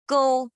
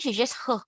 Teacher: take your hands and put it in front of your lips g-o-u is go no air